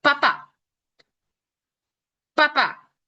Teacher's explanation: Por eso se llama, de hecho, este tipo de, de sonido como bilabial, bilabial porque son los dos labios y usamos los labios en sí